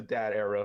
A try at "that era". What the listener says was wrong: Dad era. It sounds like you're saying dad. Okay, again, you're saying it, but it keeps coming out as D.